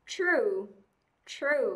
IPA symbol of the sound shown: u: